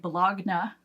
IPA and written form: bəˈlog.nə (bologna)